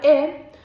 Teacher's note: Para la vocal E, su altura es media, la posición de la lengua es anterior y de igual manera no existe el redondeamiento